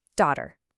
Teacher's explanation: It's not a hard t sound. It's softer, almost like a d.